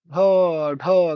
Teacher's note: उच्चारण में जीभ की नोक झटके से तालू से छूकर वापस आ जाती है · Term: उच्छित व्यंजन